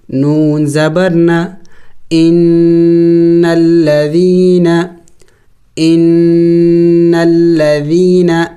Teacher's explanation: یا ساکن سے پہلے اگر زیر ہو تو اسے یا مدہ کہتے ہیں. یا مدہ کو ایک الف کے مقدار کھینچنا ہوتا ہے، لمبا کرنا ہوتا ہے